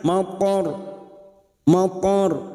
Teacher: ro kita baca tafkim karena sebelumnya ada harakat fathah dan kita mewakafkan di sini maka ro kita baca tafkim mim